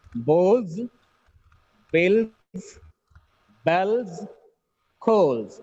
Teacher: The last sound should be z when a noun has l sound at the end.